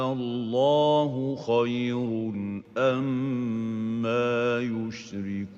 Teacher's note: Instead, we pronounce it Allah. So the second hamza remains, but lengthened, given a mad.